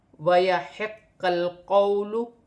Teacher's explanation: وَيَحِقَّ الْقَوْلُ، یہاں پر ح کے ساتھ قاف کو ملا کر پڑھا جائے گا، قاف مشدد ہے اور قاف کو لام کے ساتھ ملا کر پڑھا جائے گا